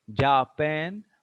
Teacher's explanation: Here stress is on pan.